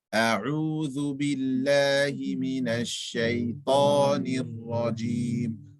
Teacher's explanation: Only Ta and only Rajim is full mouth. The Ra is full mouth. Everything else is empty mouth.